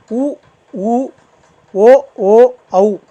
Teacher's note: வாயோட இதழ் இருக்கு இல்லைங்களா அது வந்து குவிப்பதுனால பிறக்குது